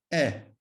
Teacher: u which has an accelerant an acute accent an acute accent this is a short a sound like in the english egg it is short it is not like the air sound